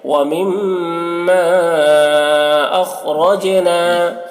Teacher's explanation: خا کو پر پڑھیں گے اور را کو بھی پر پڑھیں گے، جیم میں قلقلہ کریں گے